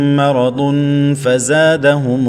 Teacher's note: تنوین کے بعد فا آ رہا ہے حروف اخفا میں، تو اخفا کریں گے